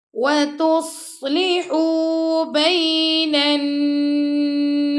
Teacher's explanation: نون کو ہم نے نون سے ملا دیا اور یہاں پہ ہم نے غنہ کیا، اور سین پر ہم نے سٹاپ کیا تو سین کو ہم نے ساکن کر دی، اس کی زیر ختم کر دی.